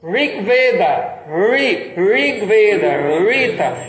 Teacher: a quarta vogal, que é a vogal cerebral, que é no céu da boca, ela é transliterada como um R, mas ela não é a consoante R.